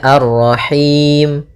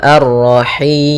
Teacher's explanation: kita boleh memanjangkannya dua harakat boleh juga empat harakat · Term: Mad